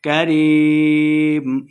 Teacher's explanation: غرک بربک الکریم، با مشدد ہے، را کو با کے ساتھ ملا کے پڑھنا ہے، لمبا بالکل نہیں کریں گے۔ کریم، یا مدہ ہے، 2 حرکات اس کو لمبا کرنا ہے